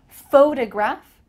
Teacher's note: When you're talking about the physical thing, a photograph, we're gonna emphasize a different part of the word, photograph. Do you notice that the first syllable is emphasized here?